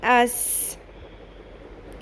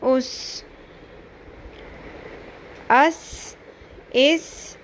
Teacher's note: سیٹی کی آواز آنی چاہیے